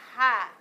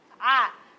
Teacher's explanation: Ha ha ada angin. A tidak ada angin.